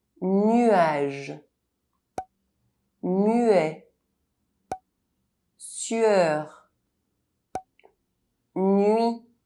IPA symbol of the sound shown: ɥ